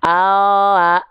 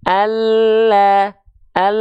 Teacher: maka nampak pelafalannya akan lebih penuh dibanding huruf L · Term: lam hijaiah